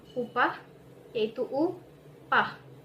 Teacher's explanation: Alofon yang pertama, yakni U, dilafalkan pada bentuk bersuku kata terbuka